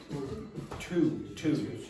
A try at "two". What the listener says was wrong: you put your tongue in the wrong position to pronounce the T in English.